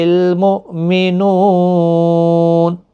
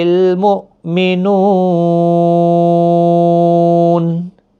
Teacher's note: حمزہ ساکن کو جھٹکے کے ساتھ پڑھیں، نو واو مدہ ہے، اور وقف کی صورت میں جب نون ساکن ہوگا 3 سے 5 الف کی مقدار کے برابر کھینچ کر وقف ہوگا